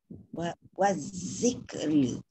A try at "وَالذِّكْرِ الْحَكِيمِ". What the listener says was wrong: Cuma je jangan bunyi zik.